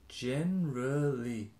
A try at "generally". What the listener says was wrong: That sounds like January. Enero. Generally.